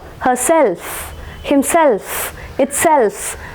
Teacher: stress will be marked on the suffix. Okay, so considering these compound words that ends in ever or self, stress will be marked on that particular syllable having that particular word, ever or self.